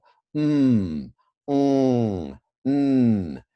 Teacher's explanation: There's no way to say an M really without your vocal cords. It doesn't quite work.